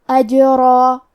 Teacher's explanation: کلمت اجرا میں حرف الجیم پہ جزم ہے لہذا ہمیں جیم کو قلقلہ سے پڑھنا ہے. حرف الرا کو اور مد الف کو دونوں کو تفخیم سے مطلب بھاری آواز میں ادا کریں گے